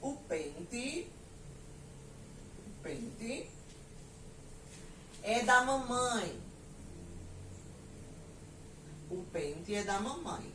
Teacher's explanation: aqui eu tenho a palavra pente escrita com E, porém o som é da letra I. A gente sabe também, já viu, que pente não é, a sílaba tônica não é a última, tá? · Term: som de I